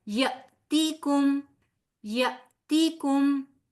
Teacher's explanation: جب حمزہ کے اوپر جزم آ جاتی ہے تو وہ حمزہ جھٹکے کے ساتھ ادا ہوتا ہے · نذیر نون بھی باریک، زال نہایت نرمی کے ساتھ، آگے یائے مدہ ہے لہٰذا 2 حرف برابر کھینچیں گے.